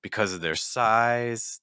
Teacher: Because of their size, then we're going to go down in pitch.